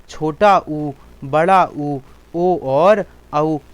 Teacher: छोटा ऊ, बड़ा ऊ, ओ और औ जीभ के पिछले भाग से बोले जाते हैं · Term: पश्च भाग